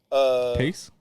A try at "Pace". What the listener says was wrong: Is Pace have the silent E at the end? So in the A, you don't say I, you say A. A.